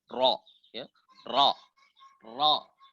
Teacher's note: ujung lidah menyentuh langit-langit atas bagian depan di depan daripada huruf nun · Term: rok